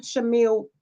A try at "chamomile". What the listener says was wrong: The H is silent. It's chamomile.